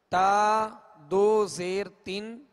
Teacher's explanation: اس کی ادائیگی میں بھی جیسے حرکات کی ہم نے مشق کی تھی، زبر کو منہ اور آواز کھول کر، تو اب اس کی جب آواز جو 2 زبر کی ہے اس میں بھی آواز جو ہے منہ کھول کر ادا کریں گے، جیسے طن اور طن میں آواز کو گرا دیں گے، دو زیر میں آواز کو گرا دیں گے تاکہ معروف پڑھا جائے، مجہول تین نہیں پڑھیں گے